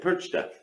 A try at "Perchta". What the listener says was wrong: Yeah, but you don't have the R sound. Percha.